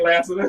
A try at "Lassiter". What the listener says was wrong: No, it's Lassiter. It's a T in there. It ain't no D.